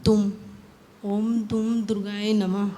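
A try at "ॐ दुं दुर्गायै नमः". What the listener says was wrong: हाँ, और पूरा माँ नहीं है, आधा माँ। ओम दुम, म क्लियर नहीं आएगा इसमें।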